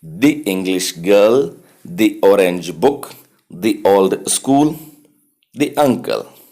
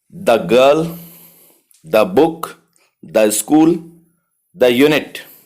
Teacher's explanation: vowel के पहले इसका प्रोनाउंसिएशन दी, कंसोनेंट के पहले इसका प्रोनाउंसिएशन द